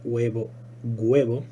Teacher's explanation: que el sonido consonántico que se originen sea un sonido velado una consonante que se pronuncia en la misma zona en la que se pronuncia la q